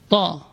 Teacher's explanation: posisi ujung lidah berada di usul thanaya, di pangkal gigi seri atas. Ta. Dan ini termasuk huruf yang paling kuat dalam Al-Qur'an. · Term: huruf ta